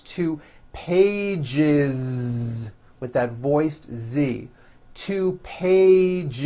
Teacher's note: 1 page becomes 2 pages with that voiced Z. 2 pages. It's not 2 pages, unvoiced, no.